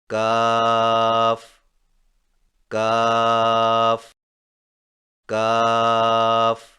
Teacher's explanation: کاف کی ادائیگی میں زبان کی جڑ کو کوے کے قریب تالو پر لگا کر باریک آواز میں پڑھیں، یعنی کاف کاف کاف۔